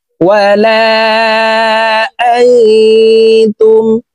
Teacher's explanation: নুন সাকিনের পরে ইকফার হরফ তা আসছে, এই কারণে এই নুনকে নাকের ভিতরে লুকাইয়া গুন্নার সহিত পড়ব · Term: ইকফা গুন্না